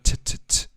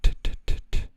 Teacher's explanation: In English, the T is invariably produced with the tongue behind the teeth.